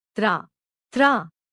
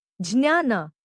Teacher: Jnya is a combination of ja with the nasal consonant nya with the implicit vowel sound a.